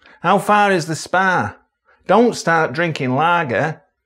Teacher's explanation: The calm vowel is quite far forward.